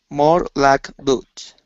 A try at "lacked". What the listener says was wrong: give me a t sound